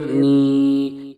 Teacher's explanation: یا مدہ کو ایک الف کے برابر کھینچ کر پڑھیں گے، جیسے نون یا زیر نی۔